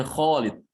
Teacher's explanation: Kho tebal. Kho harus ditebalkan. Alifnya ikut tebal.